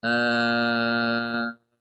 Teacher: Hamzah wasalnya diganti dengan huruf mad, ya, sehingga dibaca al-an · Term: ibdal